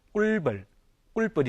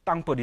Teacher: 땅벌인 게 아니라 사실 발음되면 땅벌이 되죠. 자연히 뒤에 비읍이 된 소리로 발음됩니다